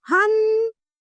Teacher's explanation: इसमें कंठ और नासिका दोनों का प्रयोग किया जाता है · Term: चंद्रबिंदु